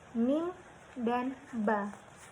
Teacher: keluar dari bibir atas dan bawah bertemu dan tertutup